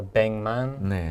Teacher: the kind of G or K sound goes to more of an NG